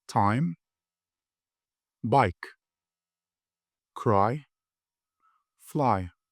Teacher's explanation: A ve i sesleri birleşiyor. I diye okuyorum.